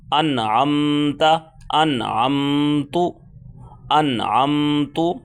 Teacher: نون ساکن کے بعد آئین آ گیا تو آئین جب آئے گا تو آئین حروف خلقی میں سے ہے تو یہاں پر اظہار ہوگا